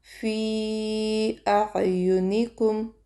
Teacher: یعنی یا به نه کشو، نون به هم نه کشو، یو حرکت دی.